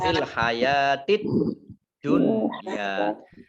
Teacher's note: alif lamnya alif lam syamsiyah, tidak dibaca tetapi langsung masuk ke huruf berikutnya, yaitu dal, ditandai dengan dalnya ada tasdidnya.